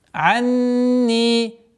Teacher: Здесь у нас назализация в размере 2 огласовок, после которой долгота в размере 2 огласовок кясры.